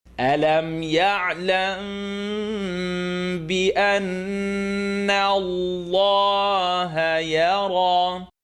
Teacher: When there's a mim with a connect on top of it followed by a ba, the sound vibrates between your lips.